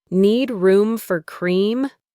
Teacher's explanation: The full sentence is, "Do you need room for cream?" But in a busy, repetitive job like this, people use shortcuts. The do you is completely dropped. It's understood from the context. So, she just asks the main part of the question. · Let's look at the sounds. Need room links together and for cream can sound like fur cream.